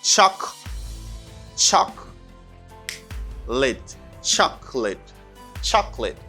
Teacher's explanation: You don't pronounce this syllable, chaka. You just say chalk.